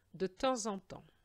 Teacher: And the final S of the second temps is silent.